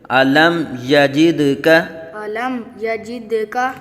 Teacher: میم ساکن کے بعد حرف با اور میم کے علاوہ یا آ رہا ہے، تو یہاں اظہار شفوی ہوگا، یعنی میم ساکن میں غنہ نہیں کریں گے